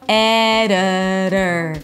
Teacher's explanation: Here the T is a flap T, and the flap T sounds just like a D in the middle of the word between two vowels. So actually you have two sounds here that sound exactly the same. · The I is a schwa, the O is a schwa. So both of them are reduced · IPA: ˈɛ-də-dər